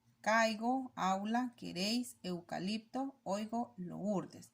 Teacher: en estos ejemplos la vocal abierta va primero y después la acompaña a una cerrada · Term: diptongos